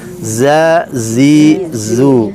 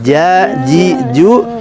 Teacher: kalau Zain ini di ujung lidah ya kalau gym di tengah lidah